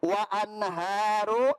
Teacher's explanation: di sini nun mati bertemu dengan ha, maka dibaca jelas, tidak boleh dengung. Karena alasannya nun mati bertemu huruf ha.